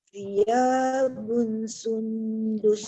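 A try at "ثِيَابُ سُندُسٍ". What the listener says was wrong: Tak panjang. Thiyabu sundus. Jadi jangan sun. Sundus. Sundus.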